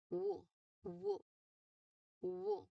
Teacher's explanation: the sound is produced as the lips quickly unround to the position of the next vowel. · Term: glide